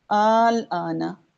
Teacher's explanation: حرف مدہ کے بعد سکون آ رہا ہے تو ہماری یہ بڑی مد ہو گئی، ہم اب اس کو اصل مقدار سے بڑھا کے پڑھیں گے، ہم اس کو اصل مقدار سے پڑھا کر پڑھیں گے۔